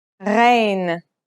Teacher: Its sound is similar to the sound you make when you gargle, a sound that comes from a point deep in the throat.